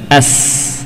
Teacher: Suara dan udara, hawa mengalir melewati celah yang tersisa antara apa? Gigi seri atas dan bawah. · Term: sin